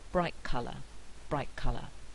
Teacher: fact that the next word begins with a feeler consonant so we have the backward effect of the velar consonant at the beginning of color on the alveolar consonant so it's produced with the back of the tongue already pressing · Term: velar assimilation